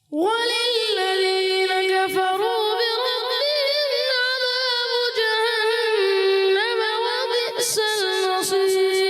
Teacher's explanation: نون مشدد میں ایک الف کا غنہ بھی کریں گے